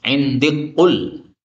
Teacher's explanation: Jadi kafnya hilang menjadi qaf. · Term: idgham